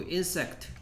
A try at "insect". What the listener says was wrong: 얘는 세게 소리 안 나요.